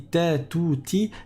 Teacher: La différence est au niveau de l'arrière de la langue. L'arrière de la langue, quand on dit ta, tout, ti, l'arrière de la langue il est bas.